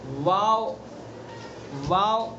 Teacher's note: واو دونوں ہونٹ جبکہ پورے نہ ملے